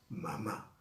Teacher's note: caso es la última sílaba mamá quiere decir quiere decir que cuando yo pronuncie con la mayor fuerza de voz en la última sílaba ahí hay una acentuación · Quiere decir que cuando yo pronuncio o pongo la mayor fuerza de voz en la última sílaba, ahí hay una acentuación. Y esa palabra se llama agudas, porque lleva la acentuación en la última sílaba y llevan tilde. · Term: palabras agudas